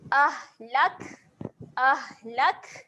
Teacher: huruf ha dan huruf kaf. Ketika mati dia ada keluar angin juga.